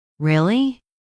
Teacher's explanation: If you say really in a flat voice, it sounds bored. If you say really with energy, it sounds excited or surprised.